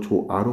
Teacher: 표기할 때는 히읗을 그대로 쓰는데 발음할 때 조화 이렇게 발음하지 않고 조아로 발음하죠. 히읗은 모음과 모음 사이 끼었을 때 발음이 구별이 안 되기 때문에 탈락돼요. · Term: 히읗 탈락